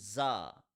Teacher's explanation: In the letter za, the tongue does not touch anywhere and it is read as a hard letter. It sounds like a Z.